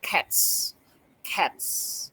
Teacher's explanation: Okay, for example, the s and in cats stand next to the voiceless sound like t. T is a voiceless sound. So the s ending sound is s.